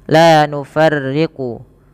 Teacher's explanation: Rya itu dibaca dengan tipis